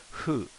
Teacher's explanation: h and an f okay so it's almost like a hoo it's like you're saying who but you're making a slight f with your bottom lip